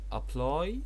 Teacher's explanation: ادي الستريس موجود اهو على second syllable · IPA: ə'plaɪ